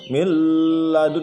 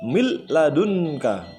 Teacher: Tidak pakai dengung, jadi langsung mil ladunka. · Bacanya tidak min ladunka tapi diidghamkan secara langsung berubah menjadi mil ladunka, seakan-akan tasdid ya. Mil ladunka tanpa dengung. Kalau dengung mil ladun, nah itu salah. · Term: idgham bila gunnah